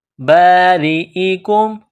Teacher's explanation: را کے نیچے زیر ہے تو را کو باریک کرنا ہے